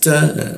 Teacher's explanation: ta ujung lidah bertemu gigi, ada hembusannya, desis, bocor tipis